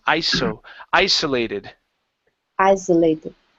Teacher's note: give me an unvoiced S sound